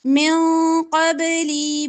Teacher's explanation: نون ساکن کے بعد قاف ہے اخفا ہوگا نون کو یہاں پہ چھپائیں گے